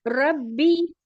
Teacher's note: را کے اوپر پیش کی حرکت ہے، با کے نیچے زیر کی حرکت ہے، اسے بھی جلدی ادا کریں گے. با کے اوپر تشدید آ رہی ہے تو اس کو سختی سے پڑھیں گے اور را کو با سے ملائیں گے · یہاں پر پر پڑھیں گے کیونکہ را کے اوپر میں زبر اور پیش کو پر پڑھا جاتا ہے اور زیر آتا ہے تو اس کو باریک پڑھا جاتا ہے.